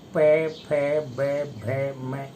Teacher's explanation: पै फै ओष्ठ का मुख्य भाग होने के कारण उच्चारण में अत्यधिक सहयोग देने के कारण इसको उपधैमानीय कहते हैं। यानी बिना दोनों ओष्ठों के स्पर्श किए हुए पै फै बै भै मै ये उच्चरित नहीं होता, इसलिए इनका नाम उपधैमानीय रखा है।